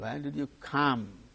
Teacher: when did you come come is the tonic syllable there that falling tune is marked